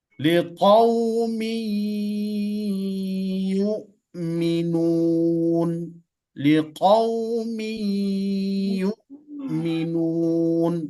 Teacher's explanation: Tanwinnya masuk ke dalam huruf iya · Kita lihat contoh idgham di situ, ada tanwin bertemu dengan huruf iya. Cara membacanya didengungkan.